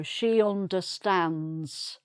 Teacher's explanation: So no d sound at the end.